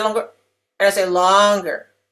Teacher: Okay, so when we talk about word stress, we also know that every word has to have a vowel sound of some sort, and the peak vowel of a word, which may be a multisyllabic word, the peak vowel of the word is longer in duration. It takes longer to say it. So if I say longer, and I say longer, you can hear the difference, right?